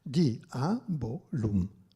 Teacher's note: non fa dittongo ma è iato